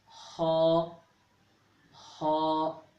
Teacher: خا کو حلق کے اس حصے سے ادا کیا جاتا ہے جو منہ کی جانب ہے